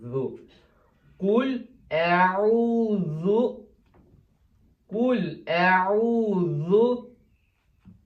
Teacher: Və zu da pəltəkdir. Dil çölə çıxır.